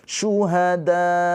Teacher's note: Syuhada tuh dikasih penekanan akhirnya. Kenapa? Karena supaya menandakan di situ ada hamzah. Kalau enggak ada penekanan, ya udah syuhada enggak ada Hamzah, maka harus ditekan akhirnya syuhada gitu ya. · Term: hamzah sukun